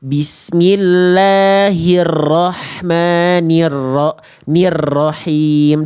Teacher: dari hi dan ni itu enggak ada huruf lain langsung ke R enggak dipanjangin hi-nya. enggak dipanjangin n-nya